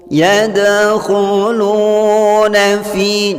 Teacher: waw sukun di sini diperhatikan diawali baris dhammah pada huruf lam. Membacanya dipanjangkan 2 harkat. Hukum bacaannya mad tabi'i atau mad asli.